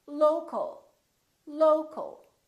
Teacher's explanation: But, we don't say lo-cal or lo-cal. We reduce the second syllable and it becomes the a.